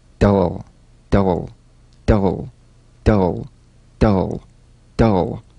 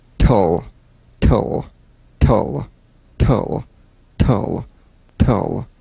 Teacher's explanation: DL and TL, cognates, voiced and unvoiced, tongue tip to gum ridge consonants.